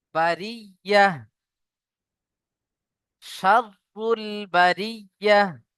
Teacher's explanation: আর এখানে গোলতা, আয়াতের শেষে যদি গোলতা আসে, সেখানে আমরা হা সাকিন করে পড়বো। আর হা সাকিন, যেহেতু সাকিন আলা অক্ষরকে ডান দিকের অক্ষরের সাথে মেলাতে হবে।